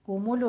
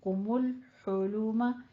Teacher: आगे लाम के ऊपर कलकला नहीं करना, कुमुलो नहीं कहना, कुमुल हुलूमा।